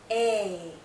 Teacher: This is a long vowel sound. A. Our mouth is opening more. Our jaw is lowering. A. This sound is also tense.